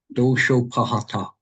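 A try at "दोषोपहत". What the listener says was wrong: Right. That was correct.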